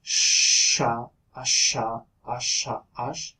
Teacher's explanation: So that will make this sound as sha, asha, asha, ash, and it has a much lower frequency than S does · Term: esh